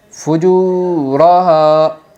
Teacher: واو ساکن کو ایک الف مقدار کھینچ کر پڑھے گی